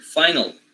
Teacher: the l in final position velarized